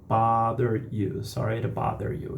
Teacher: a gente tem aí o T transformado nesse R, nesse flap T, porque ele está entre o som de duas vogais